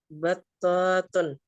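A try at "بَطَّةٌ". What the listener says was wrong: Nggak panjang ya. Batun. Nggak dipanjangkan.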